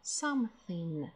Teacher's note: Обратите внимание на сочетание TH, межзубный глухой звук Th, язык между зубами